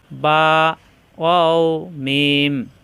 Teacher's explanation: দুই ঠোঁট হইতে উচ্চারিত হয় নরম করে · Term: 15 নাম্বার মাখরাজ